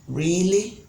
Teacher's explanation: You can see that these all have rising pitch at the end of the statements or questions. · At the end, you see the pitch goes up. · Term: rising intonation